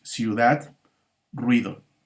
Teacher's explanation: Y la otra manera en que se presentan los diptongos es cuando se presentan dos vocales cerradas distintas, la I y la U, que son las dos vocales cerradas, conviven en una sola sílaba